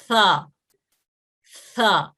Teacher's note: اب یہ دیکھیں کہ زبان کی نوک, جب یہ زبان کی نوک ہے یہ دانتوں کے اوپر, جو اوپر کے دو دانت ہیں اس کی یہ جو زبان کی نوک اوپر کے دو دانتوں کے جو ایج کو ٹچ کرتی ہے تو لفظ ثا ادا ہوتا ہے, اور اس کی آواز باریک ہے, نرم ہے, اور اس حرف کے مخرج سے سانس کا اخراج ہوتا ہے. ثا, ثا, جب آپ اس کو صحیح سے پڑھیں گے تو اب آپ کے منہ سے گرم ہوا کا اخراج ہوتا ہے.